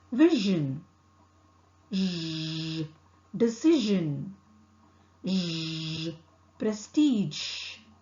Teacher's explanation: Articulation is with the tip and front of the tongue close to the back of the teeth ridge. The air escapes between the tongue and back of the teeth ridge. Here the vocal cord vibrates.